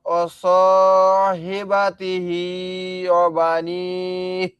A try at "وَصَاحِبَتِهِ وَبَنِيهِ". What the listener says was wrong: আবুল কাসেম ভাই, এখানে হা আছে কয়টা? আপনি তো ভাই দুইটা হা পার্থক্য করলেন না, এখানে কি দুইটা কি একই হা?